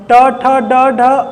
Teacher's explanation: इनका उच्चारण स्थान मूर्धा है।